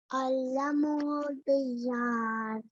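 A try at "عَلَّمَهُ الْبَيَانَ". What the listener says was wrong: Yeah, so try not to combine bayan. Yeah, don't go over the ya. It's two different letters. Bayan.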